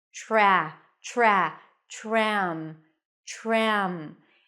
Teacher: when the T appears before an R it actually sounds like a CH sound as in chicken